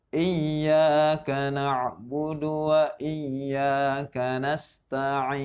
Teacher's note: iya di sini 2 harakat, ya. Dan juga K-nya tidak panjang. Jadi salah jika lo dibaca panjang lebih 2 harakat iyanya, misal iya.